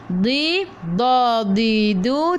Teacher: Di, da, di, du. Tepi lidah menyentuh gigi geraham atas. Hujung lidah duduk belakang gigi taring.